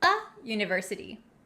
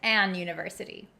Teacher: On the other hand, a word that starts with a vowel, university. The U in university doesn't sound like a vowel. It has the y sound.